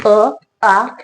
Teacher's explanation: अ, आ हे 2 स्वर कंठामधून निघतात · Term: कंठवर्ण